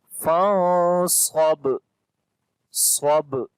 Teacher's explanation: On the ba we make qalqala, which is the strong qalqala here.